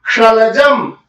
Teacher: तालव्य स कहने मात्र से ही समझ में आ रहा है कि उसका उच्चारण स्थान क्या है, तालु